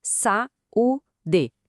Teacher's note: Como as vogais se separaram, cada uma na sua sílaba é um iato.